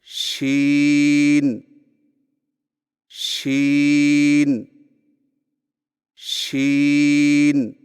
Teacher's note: जुबान के दरमियान को तालू की तरफ बुलंद करते हुए बारीक और फैलती हुई आवाज में पढ़े · شین کی ادائیگی میں زبان کے درمیان کو تالو کی طرف بلند کرتے ہوئے باریک اور پھیلتی ہوئی آواز میں پڑھیں